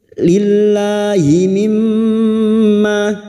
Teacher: mim yang bertasdid gunnah musyaddadah kita dengungkan selama 3 harakat